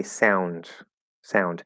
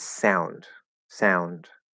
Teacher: it's kind of like it's a d that has almost lost all of its voice and it sounds more like a t